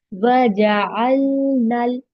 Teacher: नून को लाम से मिलाएंगे क्योंकि आगे शद्दा आया है